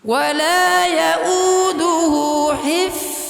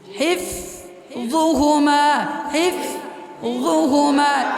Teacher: ফা হলো হামসের হরফ, ফা হামস, আর হলো রখওয়া, আর ইস্তেফাল, আর ইজলাক।